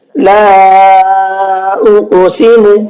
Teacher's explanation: حروف مدہ کے بعد میں حمزہ دوسرے کلمے کے شروع میں آ رہا ہے، جس کی وجہ سے یہاں پر چھوٹا مد ہو رہا ہے، مد منفصل ہوگا۔